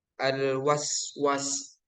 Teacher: desiran nafasnya lebih kuat dibanding dengan Hames yang sekedar membunyikan hurufnya dengan hembusan nafas yang lebih ringan · suara yang menyerupai suara burung yang mengiringi ketika mengucapkan salah satu dari 3 huruf, yaitu zai, sin, sod. Safir itu kuat ketika disukun. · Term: as-safir